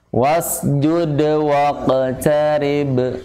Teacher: Kalau hamzah wasal hamzahnya hilang.